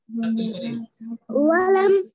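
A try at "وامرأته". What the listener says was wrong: लाम कहाँ है इसमें? लाम कहाँ है इसमें? वाव के बाद मीम है। वम वम रातुहु अरे हा के बाद तो है भाई, यहाँ पर देखिए हमने कौन सा हर्फ है ये?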